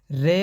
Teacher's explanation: र का उच्चारण करते समय जीवा में कंपन होता है अत इसे प्र कंपित व्यंजन कहते हैं दोस्तों अतः इस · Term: लुंठित